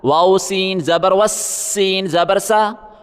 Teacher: اگلا لفظ دیکھیں، واؤ کو سین کے ساتھ ملائیں، سین کے اوپر تشدید ہے، سختی کریں. سیٹی کی بھی آواز نکالیں، بیچ میں الف نہیں پڑھا جائے گا.